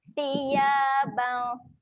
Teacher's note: Huruf sa. Jangan lupa jelikan lidah. Keluarkan lidah.